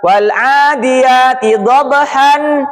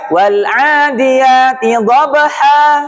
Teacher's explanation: Tanwin hilang, ganti panjang 2 harokat. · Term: mad iwad